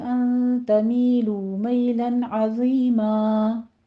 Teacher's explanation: تمیلو میں نون ساکن کا قاعدہ اخفا حقیقی ہے، یہاں بھی 2 کاؤنٹ کرنے ہیں ، می اور لو دونوں